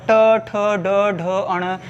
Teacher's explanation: ये मूर्धन्य है दोस्तों, ये मूर्धा से होता है उच्चारण इनका